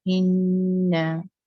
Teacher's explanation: मुशद्दद means double है, नून 2 time है, तो इस वजह से वहां पर हमने गुन्ना करना होता है इन्ना, तो इसको इन्ना नहीं पढ़ना और इना भी नहीं पढ़ना, जल्दी में नहीं करना।